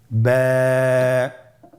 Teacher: এর মাখরাজ হলো আপনার 2 ঠোঁটের বিজা অংশ থেকে আপনি উচ্চারণ করবেন।